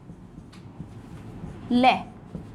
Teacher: तो एक ही वर्ण है पार्श्विक में, ल। इस ल को बोलने पर मुख में से जो वायु है वो मुख के अगल और बगल से बाहर निकलती है, इसलिए इसे हम कहते हैं पार्श्विक वर्ण।